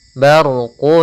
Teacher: ro yang berharakat sukun sebelumnya fathah kita namakan dengan ro tafkhim ro yang tebal